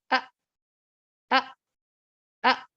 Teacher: یہ جو اقصل حلق ہے, جو گلے کا بالکل نیچے والا حصہ ہے, وہاں سے ادا ہوتا ہے. تو حمزہ کی یہ صفت ہے کہ یہ بھی بہت اس میں شدت پائی جاتی ہے اور یہ بھی ووکل کورڈز کو بالکل بند کر دیتی ہے.